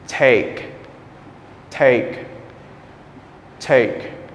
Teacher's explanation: The back of your tongue will touch the roof of your mouth.